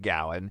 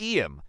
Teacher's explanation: when two vowel sounds meet. We often add a little W or Y sound to connect them. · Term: linking